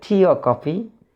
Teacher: So coffee is here falling intonation. Falling intonation will occur on coffee.